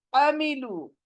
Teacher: हलक के बीच से आइन का निकलना जरूरी है।